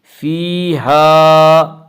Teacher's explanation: فیہا الف مدہ، الف ہمیشہ مدہ ہوتا ہے اور الف سے پہلے زبر ہوتا ہے، اور الف مدہ کو ایک الف کے برابر کھینچ کر پڑھیں گے